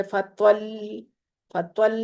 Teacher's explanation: لام کو تھوڑی دیر پکڑ کے رکھیں گے، پھر اس کی تشدید ادا ہوگی